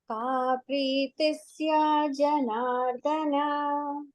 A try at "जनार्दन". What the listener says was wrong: Not dhana, dana, alpa prana.